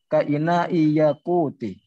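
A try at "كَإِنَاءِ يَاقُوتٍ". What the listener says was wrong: Tanwin. Kan enggak ada alnya. Ka ina'i yaqutin.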